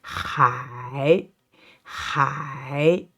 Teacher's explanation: b it means what B bite and this one h i this time third tone so it's a curve